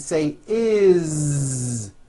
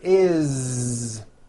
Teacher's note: this time we always add the ending is with a voiced Z